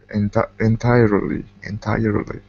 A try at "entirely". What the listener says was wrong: Okay. Good.